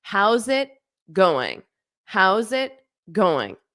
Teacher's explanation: How's it? And then you can have a little pause before going because going is not linked.